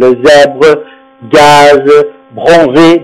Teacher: Au Z, généralement, on prononce le S sonore, c'est-à-dire Z, par exemple le zèbre, gaz, bronzé, d'accord?